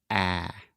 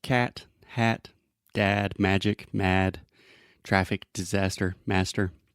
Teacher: start with the first sound this is the a sound and it is a very open Sound which means our tongue position is low and our mouth is very open so imagine opening your mouth as much as possible and then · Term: ah sound